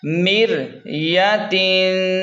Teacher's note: میم را زیر مر، یہاں زیر کی وجہ سے را باریک ہوگی۔ یا زبر یا، تا دو زیر تن، مر یتن۔